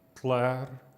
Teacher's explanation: This is a strange sound, a lateral affricate, we call it.